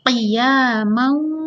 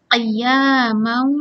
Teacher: Dibaca dengung masuk ke huruf waw. Jadi bacanya qiyamau, masuk ke hidung lah ya. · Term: idgham bi gunnah